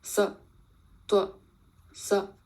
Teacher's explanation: Tone 5 is Yang Ru. This is also a checked tone, again ending in glottal stop